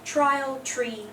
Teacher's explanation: when we have a t before an R it usually becomes a CH